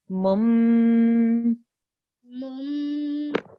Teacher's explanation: instead of pronouncing it mun, you'll pronounce it joining it to the meme sound. So it'll be mum. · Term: miniature meme